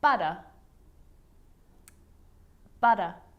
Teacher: the r at the end of the word is not pronounced